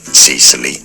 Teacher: sound is a schwa sound, so it's not Sicily generally in English, but rather Sicily. Stress on the first syllable.